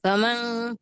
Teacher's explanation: नून पर जजम है, यहाँ इक्फा होगा।